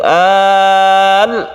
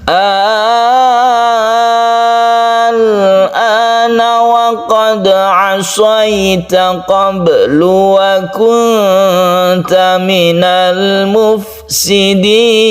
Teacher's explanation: Dengan lamnya itu adalah tawassut, tidak terlalu ditekan. Contoh kalau ditekan itu al-ana, sukun lam ini masih mempunyai tawassut itu ya.